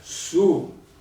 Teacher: Allora, circonflesso, pronuncio U, lungo, 1,5.